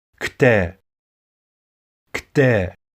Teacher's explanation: There is no vowel between that K and T, so don't be saying kte.